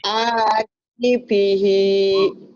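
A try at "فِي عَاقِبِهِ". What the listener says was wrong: Bukan. Yang panjangnya fi sama hi-nya doang.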